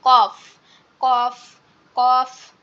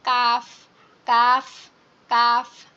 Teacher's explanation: কফের উচ্চারণটা হচ্ছে জিহ্বার গোড়া থেকে তারপর আবার উপরের তালুর সঙ্গে লাগিয়ে সরাসরি কফ কফ কফ। আর কাফের উচ্চারণটা হচ্ছে জিহ্বার গোড়ার তাল, মানে গোড়া থেকে একটু আগে বাড়িয়ে তারপর আবার উপরের তালুর সঙ্গে লাগিয়ে